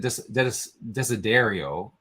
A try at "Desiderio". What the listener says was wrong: D is pronounced with a TH. Desiderio.